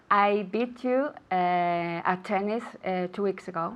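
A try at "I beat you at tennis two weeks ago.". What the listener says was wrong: Okay, without pauses now.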